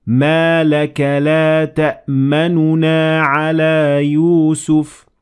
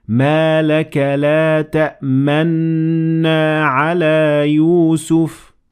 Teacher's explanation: you don't pronounce the first noon and you would instead put your lips in a position as if you pronounce the noon and it would sound like this Malik let that man alaa